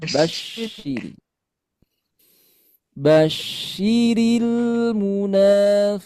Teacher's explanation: syin ini keluarnya dari tengah lidah. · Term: shin